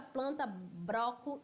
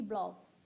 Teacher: o uso do R pelo l em final de sílaba e nos grupos consonantais